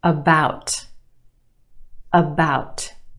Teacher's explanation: we have two syllables in that word the second syllable is emphasized or stressed the ow sound is stretched about the first syllable is your schwa about about it's not